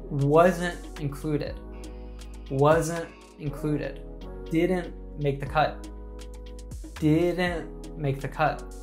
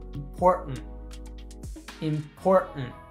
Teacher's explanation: create a small burst of air by closing your vocal cords and then quickly releasing them again. This creates a distinct pop sound, like a small cough or the sound that we hear between the syllables when we say, uh-oh, uh-oh, uh-oh. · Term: glottal T sound